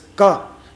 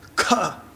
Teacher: ka is alpa prana, kha is mahaprana